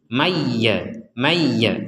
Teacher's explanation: dimasukkan mana itu tadiah ini sama dengan nun sukun bertemua jadi Nun masuk kepada ya artinya tidak boleh dibaca dengan jelas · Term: nun sukun bertemu ya